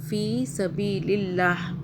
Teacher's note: رکنے کی صورت میں ہا کو ہم نے ساکن یعنی کہ چھپا ہوا کر دیا